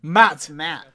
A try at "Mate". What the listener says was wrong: Mate. Yeah, no, then what's Matt. The E there for? E's can't be silent.